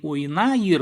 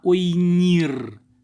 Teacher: И ойна заканчивается на гласное ойна и примыкает аффикс ир, но в этом случае выпадает а из корня